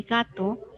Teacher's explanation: tiene dos sílabas se clasifica en bisílaba y la sílaba tónica sería ga